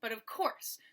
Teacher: in an unstressed away and you stress the third syllable so you have two syllables unstressed and one stressed with anapest